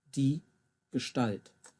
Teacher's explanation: in Gestalt, the ST. Almost sounds like a sh in it there.